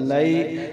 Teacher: بھی کم لمبا کریں گے، لئی لمبا زیادہ نہیں کریں بلکہ حروف لین کو کتنا لمبا کرنا ہوتا ہے، ایک الف مقدار سے بھی کم